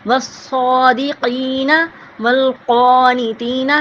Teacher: الصابرین والصادقین، یہاں پہ بھی صاد ہے، اس کو بھی ہونٹوں کی گولائی سے ادا کریں گے اور قاف کی آواز کو ہم حلق سے نکالیں گے